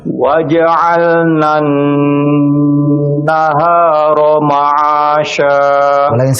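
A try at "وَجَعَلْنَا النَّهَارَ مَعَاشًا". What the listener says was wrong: sekali lagi warnanya ada pendekkan sedikit karena terlalu panjang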